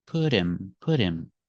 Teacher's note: the T sounds like a fast D because it's between vowels phonetically.